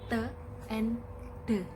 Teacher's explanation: Oral passage is blocked by pressing the tongue tip against the alveolar ridge and in the alveolar.